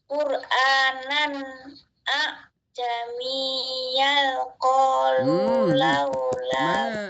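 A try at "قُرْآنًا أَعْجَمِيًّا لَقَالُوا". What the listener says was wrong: Mana lamnya enggak ada. Lamnya enggak ada, Bu. Lamnya.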